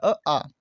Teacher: जो वायु है वो सिर्फ मुंह से बाहर निकलती है, नाक से नहीं निकलती है, तो इसका आपका ऑप्शन नंबर बी आपका ठीक हो जाएगा, आ, क्योंकि इससे आपके सिर्फ मुंह से ही हवा निकल रही है, नाक से नहीं निकल रही उच्चारण के समय। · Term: निम्नुनासिक